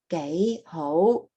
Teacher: now you're gay oh both of those are your rising tones